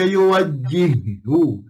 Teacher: makna kita lemparkan ha yang pertama tu masuk dalam ha yang kedua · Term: idgam dua serupa